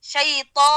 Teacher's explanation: اس کے بعد الف ہے زبر کا ادا کر کے الف کی طرف جائیں گے